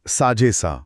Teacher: हो, हे एकत्र उच्चारले की साझेसा असा शब्द तयार होतो. साझेमधला ए कायम राहिला आणि असामधला अ लोप पावला. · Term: पूर्वरूप संधी